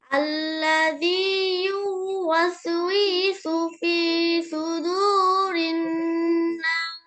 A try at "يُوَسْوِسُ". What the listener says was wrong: হয়েছে অন্যগুলো হয়েছে কিন্তু এটা টান হয়ে যাচ্ছে এটা আরো খেয়াল করে করে বেশি বেশি পড়তে হবে ঠিক আছে পড়ে পড়ে এই টানটা যেন না থাকে আর কালকে শোনানোর সময় এই টানটা আরো দ্রুত বলবেন ঠিক আছে ওয়াস উইসু ফি সুদুরিন নাস এইভাবে দ্রুত বলার চেষ্টা করবেন আচ্ছা এরপরে ফাহমিদুল মুক্তাসিম বলেন